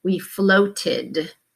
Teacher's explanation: we have to add on the ED, and it sounds a little bit more like an id